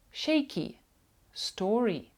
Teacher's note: у ненаголошених складах особливо в кінці слова буква y буде читатися як і коротке і